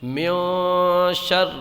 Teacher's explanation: گنہ کر کے پڑھتے ہیں، گنہ کی مقدار 1 الف کے برابر ہے، تو گنہ کے معنی ناک میں آواز لے جانا ہے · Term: اخفا